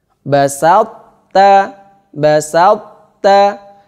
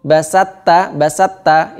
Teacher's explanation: sifat itbaknya to masih ada, yaitu dengan cara menempelkan lidah ke langit-langit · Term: idgham naqis